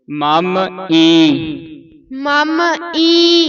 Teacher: ਈ ਨੱਕ ਚ ਬੋਲਿਆ ਜਾਊਗਾ ਇਹ ਇਹ ਨੱਕ ਚ ਉਚਾਰਨ ਹੋਵੇਗਾ